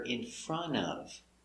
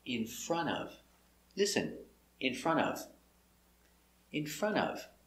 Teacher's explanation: when you say it fast, in front of, the T is silent. So you hear in front of.